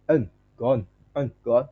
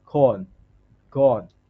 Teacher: the tip of the tongue touches the alveolar ridge with the sound made by releasing sound through the nose, like corn, gone. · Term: N sound